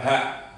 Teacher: Dalam pembahasan huruf hijaiyah secara keseluruhan, tidak hanya yang dari tenggorokan ini, hamzah dan ha ini adalah huruf yang keluarnya paling jauh, artinya mendekati dada sini